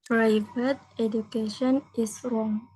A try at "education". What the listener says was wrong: D-nya bunyinya jadi bunyi J. Education.